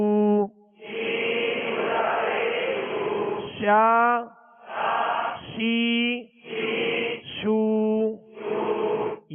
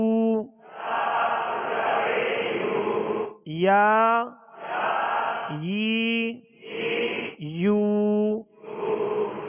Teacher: یہ جیم شین یا یہ تین حروف ایک ہی جگہ سے ادا ہوتے ہیں، یعنی بیچ زبان اور بیچ تالو، زبان کا بیچ اور تالو کا بیچ، اوپر والے تالو کا بیچ، یعنی درمیانے زبان درمیانے تالو سے جیم شین یا یہ تینوں حروف ادا ہوتے ہیں۔